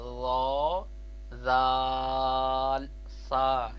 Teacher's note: حروف لساویہ ان کا القاب ہے۔ یہ زبان کا سرا اور اوپر کے دانتوں کے اندرونی کنارے سے ادا ہوتے ہیں۔